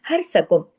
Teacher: हर सकुम रा हैवी पिछले जबर के असर की वजह से हर सकुम, बाकी तमाम बारीक है रा के अलावा।